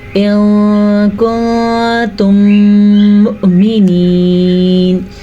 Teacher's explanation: یہاں پہ بھی اخفاء کا قاعدہ ہے اور یہاں پہ بھی اخفاء کا قاعدہ ہے, جبکہ ان دونوں میں دونوں الفاظ کے درمیان میں ادغام شفوی کا قاعدہ ہو رہا ہے کیونکہ میم ساکن کے بعد دوبارہ سے میم متحرک آ گیا ہے. ان دونوں کو ملا کے غنے کے ساتھ پڑھیں گے تو اس کو ادغام شفوی کہتے ہیں.